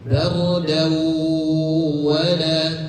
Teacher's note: ketika kata bardau tahan dulu karena masuknya idgham bi gunnah. Idgham bi gunnah, tanwin pada huruf dal an bertemu dengan salah satu huruf idgham bi gunnah yaitu waw.